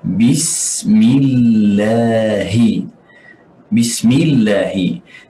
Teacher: Perlu kita keluar angin sedikit bersama huruf sin. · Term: sifatul hams